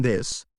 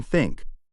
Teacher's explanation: th has two forms voiced as in this and unvoiced as in think stick your tongue out slightly and blow air for the Unice